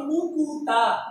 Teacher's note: মুক্তা, কয়ে ত একসাথে ছিল, যখন মুকুতা আলাদা করছি তখন ক এবং ত মাঝখানে একটা উ আসছে